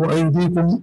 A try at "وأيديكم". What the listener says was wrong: نہیں أيديا يعني يا به نصب پڑھنا ہے